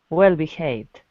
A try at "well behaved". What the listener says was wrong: There's you can drop the L when you put them together. Instead of well behaved, let your tongue just hang in your mouth. Don't let it touch anything. Well behaved. Well behaved. So we can just drop the L when it's at the end of the word. You don't have to say it.